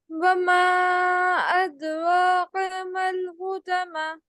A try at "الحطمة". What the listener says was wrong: حطمہ. تا کی پریکٹس کریں. ٹھیک ہے, یہ تا پڑھیاں, تو نہیں ہے. مطلب ہے تو لیکن آپ کے سے نا تا نکل رہا ہے. اس کی تھوڑی سی آپ نے پریکٹس کرنی ہے.